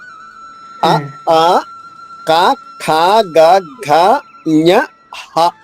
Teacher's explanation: అ ఆ క ఖ గ ఘ ్ఞ హ ఇవన్నీ కూడా గొంతు నుంచే ఉత్పన్నం అవుతాయి. మ్ దానిని కంఠ్యములు అంటారు.